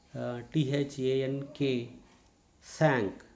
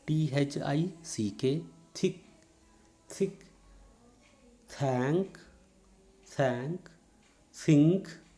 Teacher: the front part of the tongue will come very close to the teeth, but it will not touch the teeth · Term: dental voiceless fricative